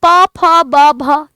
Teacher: तो आपके होंठ बार बार चिपक रहे हैं, तो ये एक ही जगह से बोले जाने वाले वर्ण हैं।